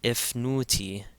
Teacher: here now we see the Jenum again over the F so it's going to add a short e sound before that F sound